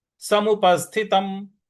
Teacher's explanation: म का पूरा उच्चारण नहीं करना है, म को वहीं पे जाकर के रुक जाना है।